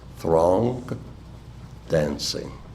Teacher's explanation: we must move from the back of the tongue at the roof of the mouth to the front of the tongue just above the teeth · there is a suspension in the juncture between these two lines forced by our need to reform our vocal organs from the NG to the D in the adjacent stress syllables throng dancing we must move from the back of the tongue